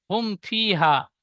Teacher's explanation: মিম সাকিনের পরে বা মিম ছাড়া অন্য অক্ষর ফা এসেছে তাই মিমকে বিনা গুন্না জাহির করে তাড়াতাড়ি পড়তে হয়